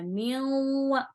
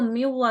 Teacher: میم کے ساتھ واو کو ملانا ہے اور پھر غنہ بھی کرنا ہے